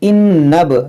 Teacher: جب ملا کر پڑھیں گے تو یہ حمزہ گر جائے گا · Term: حمزہ وصلی